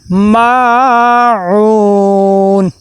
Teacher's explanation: پھر اس کے بعد عین کے بعد وہ مدہ ہے. عین کو بھی ایک الف کے برابر لمبا کریں گے